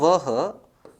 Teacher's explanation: वो दांत और होठ दोनों के संयोग से बोला जाता है, यानी वो जीवा आगे आके नीचे के दांतों को भी टकराएगी और होठों से भी प्राणवायु स्पर्श करेगी, इसलिए इसका उच्चारण स्थल है दंतोष्ठ।